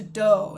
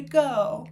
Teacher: We also would typically expect a d for g substitution. So, "I'm ready to dough" instead of "I'm ready to go." These are examples of how fronting would show up.